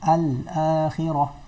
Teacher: kena makhraj lam tu, lidah kena dengan langit depan. Al-akhirah. · Huruf lam pada alif lam ta'rif dibaca dengan jelas pada baris mati. Baris mati dia akan bagi jelas mati. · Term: izhar